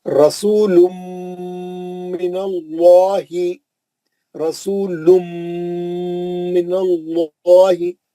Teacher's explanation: तनवीन में जो नून था वो मीम में चलेगा, मीम का गुन्ना होगा। रसूलुम, दोनों होठों को सख्ती से पकड़ लेना, आवाज को नाक में लाना, गुन्ना अच्छा करना, पढ़ना।